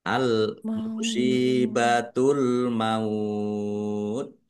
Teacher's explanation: Kemudian taknya dibaca sukun karena waqaf. Fathah yang bertemu dengan wau sukun dan kemudian waqaf. Ini namanya mad layin. Mad layin itu dibaca melunak.